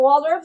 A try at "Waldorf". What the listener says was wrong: But you know the R is silent. Okay, so it is Waldorf.